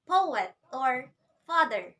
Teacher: we can notice that the first syllable is stressed followed by the answer syllable so the rhythm sounds like the